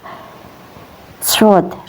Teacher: keluar dari ujung lidah yang menempel pada dinding bagian dalam dua gigi seri bawah